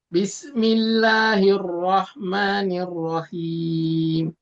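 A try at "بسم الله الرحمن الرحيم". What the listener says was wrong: Mim, ada aliran sedikit ya, gunahnya. Ada sifat tawasud, itu mengalirnya setengah harokat. Bismillahirrahmanirrahim. Jadi nggak langsung mati suaranya.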